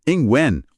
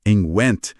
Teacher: Em when, o som morre no nariz. Em Went, a língua bate no céu da boca para fazer aquele T final bem seco.